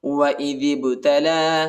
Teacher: با جو ہے با پر قلقلہ کریں گے، یعنی جھٹکے کے ساتھ پڑھیں گے، حروف یا قلقلہ کا حرف ہے۔